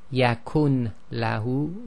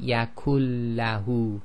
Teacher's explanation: the letter before the Noon Saakin is effectively joined to the letter after the Noon Saakin, but they call it merging. So here you wouldn't say yakun lahu, we say yakullahu.